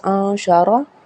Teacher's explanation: یہاں پہ اخفا ہوگا کیونکہ نون ساکن کے بعد شین ہے